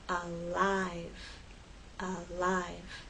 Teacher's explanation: make the L with the tip of your tongue against the bump and as you move into I you need to drop your tongue and make the full I sound a alive alive let's try